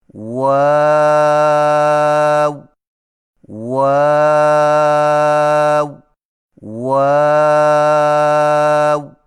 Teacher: واؤ کی ادائیگی میں ہونٹوں کو گول کرتے ہوئے اوپر کی جانب کھول کر درمیانی سی مد کریں اور پھر سے ہونٹوں کو چونچ کی مانند گول کرتے ہوئے باریک آواز میں پڑھیں